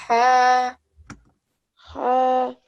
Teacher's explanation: And this is a sword, so subha, and again we give it a slight throat sound, so ha, we get the ha out from our throat.